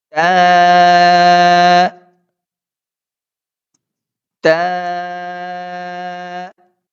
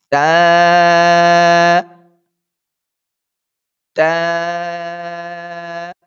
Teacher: یہ جب ہم اپنے جو زبان ہے ہماری اس کی جو نوک ہے اور اوپر سامنے کے جو دو دانتوں کی جڑ ہے یعنی جہاں سے ہمارے دانت شروع ہو رہے ہیں وہاں پہ اگر ہم اس اپنی زبان کی نوک کو لگائیں گے تو یہ تا ادا ہو جائے گا